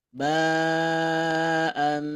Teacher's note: asalnya kan bunyinya an ya karena bertemu dengan ba maka bunyinya menjadi Bunyi m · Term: bunyi am